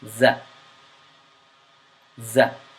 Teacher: The letter Z is pronounced from the tongue, and the tongue gets slightly pressed up against the front teeth and makes a buzzing sound